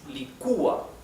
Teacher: The accent, the intonation is on the U. Licúa. Therefore, the U, since it is a weak vowel, it carries the tilde, okay? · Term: stress